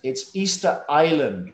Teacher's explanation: it's written Island, but the S is silent